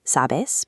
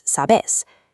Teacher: Adopting it strikes out the middle vowels found in standard Mexican Spanish, morphing "tú tienes" into "vos tenés". The consistent rule shifts verbal stress to the final syllable.